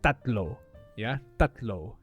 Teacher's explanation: it spelled with a t t a t l o however there is no breath when you say t